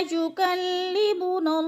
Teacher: लौला युकल्लिमुनल्लाह, नल्लाह को जब अल्लाह को पढ़ेंगे तो अल्लाह पुर पढ़ा जाएगा, इसलिए कि अल्लाह से पहले लफ्ज़ लाम के ऊपर अल्लाह से पहले लफ्ज़ नून के ऊपर ज़बर है तो अल्लाह पुर पढ़ा जाएगा।